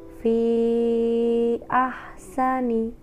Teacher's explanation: Hukum bacaan mad jaiz munfasil terjadi jika ada mad yang bertemu dengan hamzah dalam kalimat yang berbeda atau terpisah. Cara membacanya adalah memanjangkan madnya dengan 2,5 alif.